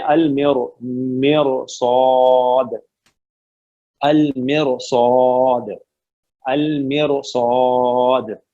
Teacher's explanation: اور تو یہ جو موٹے حروف ہے نا، اگر یہ را کے بعد سیم ورڈ میں آئے تو اگر را سے پہلے زیر ہو تب بھی کوئی فرق نہیں پڑتا، را موٹی پڑی جائے گی